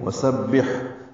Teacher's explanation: سین سیٹی جیسی آواز سے ادا کریں گے، ہا ساکن پہ ہمس ہوگا